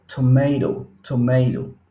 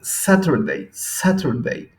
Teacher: para los americanos, cuando tienen dos vocales y en medio tienen una T, esta generalmente suena con R